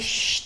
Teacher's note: To make the fat sound sh, you bring your tongue tip slightly further back in your mouth and leave a wider gap for the air to pass through. Rounding your lips can be really helpful, too.